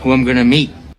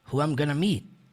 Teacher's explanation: quando ele fala who I'm gonna meet, o T do meet quase não sai